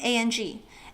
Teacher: It's kind of close to the word wrong without the WR, and the vowel is a little flatter, so it's not wrong with an ONG, but closer to AHNG, like somebody going, ah, and then adding an NG at the end.